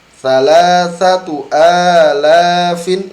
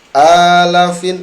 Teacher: la-nya panjang, banyak yang baca pendek